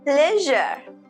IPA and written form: ˈpleʒ.ɚ (pleasure)